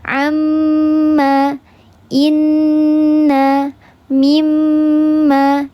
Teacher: Yang pertama ada yang akmal mattaquun atau ghunah yang paling sempurna. Yang paling sempurna ini ghunahnya didengungkan tiga harakat. Seluruhnya masuk ke hidung. Terkumpul dalam hukum ghunnah musyadah. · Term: akmal mattaqun